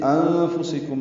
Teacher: سین باریک کاف باریک میم ساکن پہ اظہار شفوی